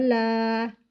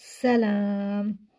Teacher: لام کے اوپر کھڑا زبر ہے، کھڑے زبر کو ایک الف کے برابر کھینچ کر پڑھتے ہیں